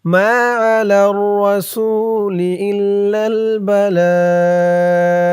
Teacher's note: এই এক আলিফ টানটাকে 3 আলিফ টান করতে হবে কিভাবে বালাগু লা বলে 3 আলিফ টান দিয়ে এই গয়নকে ধরতে হবে